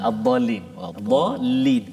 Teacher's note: Huruf mat jumpa sabdu. Nama dia mat lazim kalimi muthaqqal. 6 harakat, no discount.